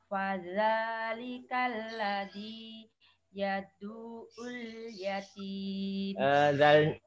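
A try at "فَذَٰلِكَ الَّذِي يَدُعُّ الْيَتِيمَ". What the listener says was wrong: Zalnya Bu, lidahnya terlalu banyak nyentuhnya. Sepertinya nggak ada bedanya bertitik sama tidak bertitik itu. Yang penting jenengan bisa merasakan beda enggak antara biddin sama yukadzibu. Ya lebih ringan karena dia nyentuh dikit aja. ujung lidah nyentuh ke gigi, balik gigi atas. Yukadzibu. Tapi yang tanpa titik nyentuhnya banyak. Nah, dia kedorong ke gigi dan gusi lidah kita, dorong. Da.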